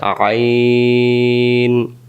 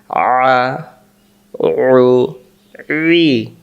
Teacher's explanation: আইন অক্ষর হলকের মধ্য থেকে একটু চেপে পড়তে হয়। হলক মানে গলা।